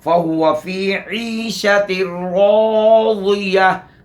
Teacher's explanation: را موٹا، اس کے بعد والا الف بھی موٹا. پھر آخر میں تا مدورہ ہے، اس کو ہا سے بدل دیں گے.